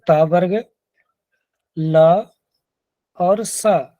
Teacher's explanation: त वर्ग, ल और स, इनका उच्चारण स्थान दंत्य होता है।